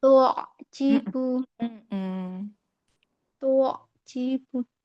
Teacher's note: Rasakan lagi ainnya wasatul halqinya